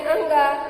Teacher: जो आपके मुख से वायु निकलती है वो मुख से डायरेक्ट ना निकल के आपके नासिका से निकलती है। इसे इसलिए इसे अनुनासिक भी कहते हैं।